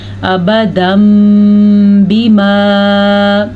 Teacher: نون تنوین کے بعد حرف با آنے کی وجہ سے نون تنوین کو میم میں بدل دیا گیا ہے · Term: اقلاب